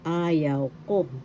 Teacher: first syllable has the accent and the third syllable